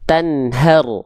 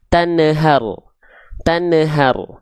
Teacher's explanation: ada nun sukun ketemu huruf ha maka di sini Nun sukunnya dibaca jelas Tanhar kesalahan yang sering kali terjadi Nun sukunnya memantul Tanhar Tanhar